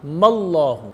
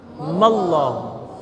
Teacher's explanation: لفظ اللہ کا جو حمزہ ہے اس کی آواز کو ختم کر دیں گے اور دوسرے میم پر زبر رکھ کر لفظ اللہ سے اس کو ملائیں گے۔